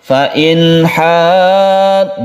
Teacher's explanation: kita tidak mendengungkan innya ini fa in, tapi dibaca jelas suara nunnya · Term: izhar halqi